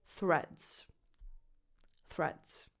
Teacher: You start with a voiceless th, as in the word think, and then you say reds.